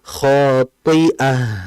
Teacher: Dan meskipun dia kasroh harus tebal ya. Tebal karena itbaq dia.